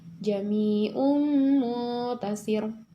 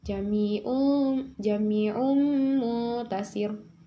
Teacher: Nah, di situ ada ro terakhir karena waqaf atau berhenti sebelumnya kasroh atau ya. Kasroh di situ terdapat huruf sin yaitu si. Cara bacanya jadi tipis atau tarkik.